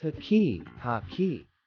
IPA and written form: ˈhɑki (hockey)